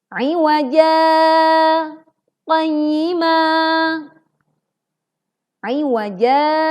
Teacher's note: Kita baca 2 harokat dan hilangkan suaranya di udara, tidak tertahan. Lalu baru kemudian kita berhenti sejenak, 1 alif, baru kemudian kita baca qayyima. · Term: saktah